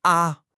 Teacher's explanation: You know that high flat sustained tone. So it sounds like a a. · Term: first tone